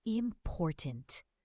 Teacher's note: Important. The second syllable is stressed.